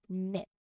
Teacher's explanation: the K is silent, and we just hear the N sound